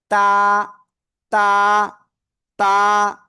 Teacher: সামনের উপরে দুই দাঁতের গোড়ায় লাগাবো, লাগিয়ে আপনার সিম্পলি এক আলিফটা নিয়ে উচ্চারণ করব।